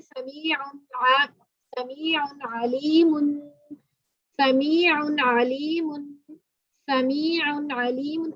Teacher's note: سمیع, یہاں پہ دو پیش ہیں یعنی تنوین ہے, تو تنوین کے بعد حروف ہلکی میں سے آ جائے تو یہاں پہ اظہار ہوگا. ظاہر کے پڑھیں گے, غنہ نہیں کریں گے.